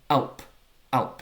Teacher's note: It starts with a glottal stop in the throat. That's a consonant sound.